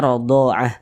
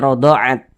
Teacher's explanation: huruf Ta ini tidak dibaca panjang Makanya kita sukunkan atau kita matikan · Kalau kita berhenti atau berwakaf tepat di huruf ta marbutoh, kalau kita berhenti tepat di huruf ta marbutoh, maka huruf ta dirubah menjadi huruf H. Nah, kita baca rodha'ah. · kalau kita berhenti huruf ta-nya berubah menjadi huruf ha